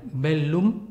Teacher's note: la doble l se lee geminada se lee como en italiano bellum por tanto con dos él es en el latín clásico